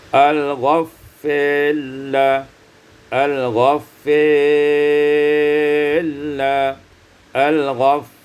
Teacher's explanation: al-ghaffarila imalatu fathatil fa wal alif, diimalahkan fathah fa dan alif, summa kemudian idghamur ra fil lam, diidghamkan ra pada lam.